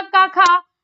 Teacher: का खा कंठ से बोला जाता है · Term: कंठ ध्वनि